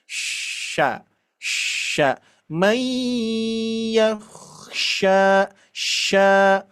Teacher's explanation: cuman bunyinya tafashi, menyebar di dalam mulut